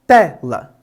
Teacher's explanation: Quando pensamos nas paroxítonas, pensamos na penúltima sílaba, como é o caso de tela. Temos duas sílabas nessa palavra e a primeira, ou seja, a penúltima, é aquela que é a mais forte da palavra, portanto ela é uma paroxítona.